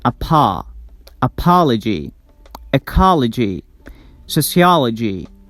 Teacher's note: the vowel before the suffix is always pronounced like ah sound